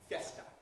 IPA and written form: fjesta (fiesta)